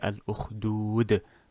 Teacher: dal is one of the letters for qalqala, the echo effect. This was a natural med, which is 2 harakas only.